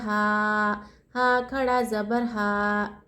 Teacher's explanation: हा के ऊपर खड़ा ज़बर, हरकत क्या है, खड़ा ज़बर है। खड़ा ज़बर को एक अलिफ की मकदार खींचेंगे। एक अलिफ की मकदार बोले तो मुट्ठी बंद कर कर एक उंगली खोले तक।